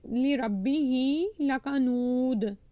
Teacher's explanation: noon wow pesh wow madda, you have to stretch it two counts